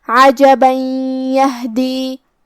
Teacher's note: ہم یہ آیت کو اگلی آیت کے ساتھ ملا کے پڑھے تو جو کہ کلمت یہدی میں حرف لیا حروف الادغام بغنہ میں سے ہے تو ہم یہ تنوین کو یا میں ملا کے غنہ اور تشدید کے ساتھ یہ حکم کو ادا کریں گے